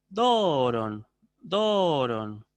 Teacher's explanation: la diferencia estaría en que yo hago una elevación y un descenso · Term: acento circunflejo